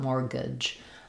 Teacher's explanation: it has a silent T. So there's no sound for the T. It's just like the word more.